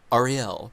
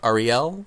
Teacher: it's like the accent is on the last syllable, isn't it?